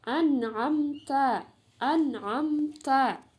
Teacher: Izhar syafawi terjadi apabila mim mati bertemu dengan huruf-huruf hijaiyah selain ba dan mim. Cara membacanya dengan menyuarakan mim mati dengan jelas di bibir serta mulut tertutup. Nomor 1 contohnya an'amta, an'amta, ya ada mim mati bertemu dengan ta.